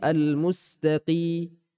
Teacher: Huruf qaf bukan dari tenggorokan keluarnya, dia dari pangkal lidah kita yang menyentuh langit-langit mulut. Jadi bukan dari tenggorokan.